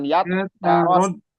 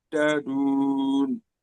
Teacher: Jadi di tasdidnya itu di dal ya, bukan taknya nggak ada tasdid. Jadi ya tarot dadun, bukan ya tarot.